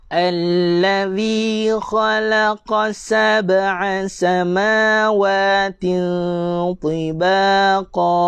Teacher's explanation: Huruf zal jangan dibaca dengan huruf zai. Jangan rapatkan gigi. Lidah kena keluar.